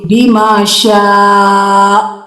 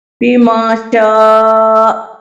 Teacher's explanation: حمزہ جھٹکے کے ساتھ آپ کی آواز بند ہو جائے گی